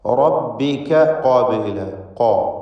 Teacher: ഖാഫ് നാവിൻ്റെ അങ്ങേയറ്റമാണ്, അഖ്സൽ ലിസാനാണ്, അത് തഫ്ഖീം ചെയ്യേണ്ട അക്ഷരമാണ്, ഇസ്തിഅലാഇൻ്റെ അക്ഷരങ്ങളിൽ പെട്ടതാണ്.